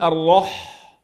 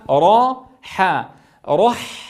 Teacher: الى الحاء لا اقول الرح وانما را حا رح انظروا كيف انتقل من الراء المفخمه الى الحاء المرققه